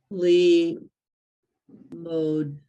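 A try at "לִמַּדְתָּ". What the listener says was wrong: the, okay, where's the vowel? If it's not over or on top, it's not an O.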